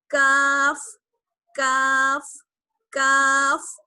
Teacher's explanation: کاف کا مخرج ہے زبان کی جڑ اور اوپر کے تالو کا سخت حصہ